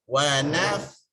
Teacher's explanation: Fa ada hamas, berangin. Sin pun ada angin. Cuma jangan kongsi angin tersebut.